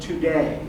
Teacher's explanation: consists of an unstressed syllable followed by a stressed syllable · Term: i am, iamb